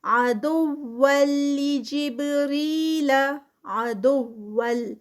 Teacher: عدوا لجبریل، عدول تنوین ہے، تنوین کے بعد لام ہے جو ابھی ہم بات کر رہے تھے اور یہاں پر ادغام ہی ہے لیکن یہ جو ادغام ہے یہ وداؤٹ اسٹریچ کے یعنی وداؤٹ غنہ، بغیر غنہ کے ادغام ہے